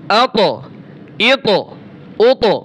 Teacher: এই যে পাল্টা একটা আওয়াজ আসে, এটার নামই হচ্ছে কি? কলকলা।